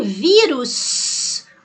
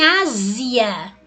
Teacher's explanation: em vírus, ó, esse S tem som de S. Agora, em Ásia, ele tem som de Z.